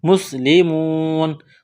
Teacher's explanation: مسلمون واو مدہ ہے، ایک الف کے برابر کھینچنا ہے